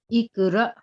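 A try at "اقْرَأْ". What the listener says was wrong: जी खौफ को, जी एक मिनट, खौफ हरफे कलकला है, इसको जुम्बिश कीजिए, और आपने ये सही किया, अलिफ साकिन जो है इसको भी झटका नरमी से देके पढ़ते हैं।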